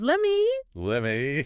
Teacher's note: The T at the end of let usually just disappears and the me gets reduced.